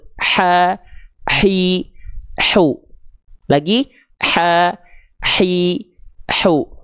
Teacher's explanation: Tapi kalau H kecil dia naik sedikit ke sini yang saya tunjuk, ini namanya adalah tengah tenggorokan. Karakter nafas yang keluar dari H kecil itu berbisik lebih lembut.